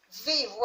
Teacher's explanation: Qual foi a sílaba tônica? O Vi. Então, o Vi foi a penúltima.